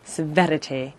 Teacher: he's gone from very posh and heightened rp to this trilled r severity there's that little trail which is really dated now and